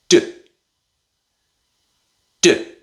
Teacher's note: You stop the air with the tip of your tongue. Then, you release the air quickly. It's like an explosion, a small explosion of air. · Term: d sound, D sound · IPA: /d/